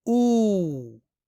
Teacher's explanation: इस वाव की आवाज को एक अलिफ के बराबर यानी दो हरकत के बराबर लंबी करके पढ़नी है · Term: हर्फ मदद